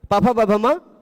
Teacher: पांचों का उच्चारण स्थान ओष्ठ और पांचों का आभ्यंतर प्रयत्न स्पृष्ट, इसलिए पांचों एक दूसरे के स्वर्ण।